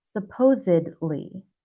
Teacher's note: with this word, the D is so quiet, almost silent